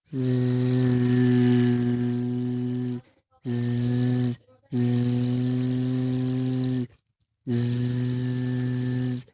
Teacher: huruf zai yang keluar hanya suara, nafas tertahan. Nah, jadi bunyinya zzz, zzz, zzz, zzz.